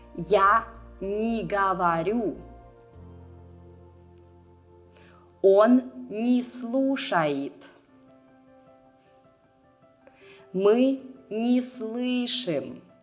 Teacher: you write не and the verb separately, but you pronounce them as one word.